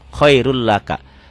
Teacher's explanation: Ditulisnya khairun laka, dibacanya khairul laka, n-nya hilang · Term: idgham bila guna